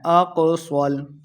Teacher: قاف کو موٹا پڑھیں گے، صاد کو بھی موٹا پڑھنا ہے،